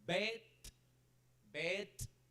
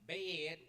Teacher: it turns a little bit elongated because of the vibration of the d sound